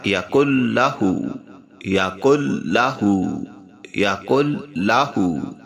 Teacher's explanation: وَلَمْ یقل لہو، یہاں پر یقل لہو میں نون ساکن ہو جاتا ہے، یعنی سائلنٹ، اس کو ہم نہیں ادا کریں گے کیونکہ یہاں پہ ادغام ہے، یعنی یہاں پر نون کی آواز لام میں مدغم ہو جائے گی اور ناک سے غنہ بھی نہیں کیا جائے گا، تو یہ یوں پڑھا جائے گا یقل لہو، یقل لہو، یقل لہو کفواً، ہونٹ گول کیے جائیں گے پیش کے اوپر، کفواً، اور واو پر بھی ہونٹ گول ہوتے ہیں، کفواً احد۔